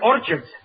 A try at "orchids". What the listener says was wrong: It's not orchids, it's orchids. The CH is pronounced like K.